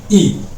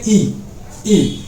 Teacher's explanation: आपके जो है जीभ का अगला भाग उससे उच्चारित कर रहे हैं आप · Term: अग्रस्वर